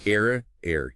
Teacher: you smoothly slide from one pure Spanish vowel sound to another within the syllable, but you don't create a totally new sound, and the original vowel qualities don't change much, unlike English I, where the sound really morphs. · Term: Diphthongs